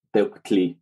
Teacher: since there's no U vowel in colonial Nawatl, that U represents just lip rounding on the K, so it would be pronounced as something like Tectli, but probably more likely as Tectli.